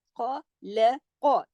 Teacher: खा और कॉफ मोटे पड़ जाएंगे, एक एक हरकत